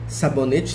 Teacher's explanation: sabonete tem 4 sílabas a penúltima sílaba é mais forte até a última o nenê é o mais forte e é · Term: sílaba mais forte